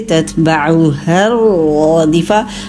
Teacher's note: تتبعوها الرادفہ، ہا کو را سے ملائیے، را مشدد ہے، اس کو ٹائم دیجئے اور پھر موٹا بھی کیجئے، 2 حرکت لمبا بھی کرنا ہے۔